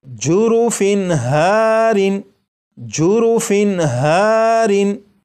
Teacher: تنوین کے نون ساکن کو ظاہر کر کے پڑھا گیا